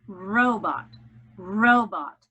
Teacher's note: The accent is on the first syllable.